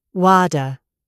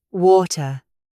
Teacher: Americans turn it into a soft D. Brits keep it sharp or use a glottal stop